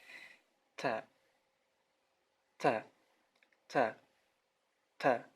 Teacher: Ta, seperti ada angin atau sedikit huruf S di ujungnya. Tapi sangat sedikit, tidak kebablasan, tidak terlalu banyak ya. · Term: hamas